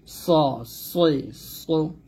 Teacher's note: সদ এর মতো মোটা আওয়াজে পড়তে হবে, অর্থাৎ সদ হলে মোটা আওয়াজ হবে, মোটা করে পড়তে হবে। জিহ্বার আগার সামনে নিচে দুই দাঁতের পেট ও আগার সঙ্গে লাগিয়ে আমরা সদ উচ্চারণ করব।